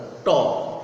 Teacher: দাঁতের পর একটা উঁচু জায়গা আছে, উঁচু জায়গার পরের অংশ, এটাই হচ্ছে পশ্চাৎ দন্তমূল। ট, আমাদের জিহ্বাটা উচ্চারণ করতে যাই ওই পশ্চাৎ দন্তমূল ট।